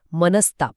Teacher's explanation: त आणि थ हे दंत्य ध्वनी आहेत, डेंटल. ते उच्चारताना जीभ दातांना लागते आणि योगायोगाने स हा ध्वनीसुद्धा दातांच्या मदतीनेच उच्चारला जातो. त्यामुळे त किंवा थ सोबत स ची जोडी अगदी परफेक्ट बसते.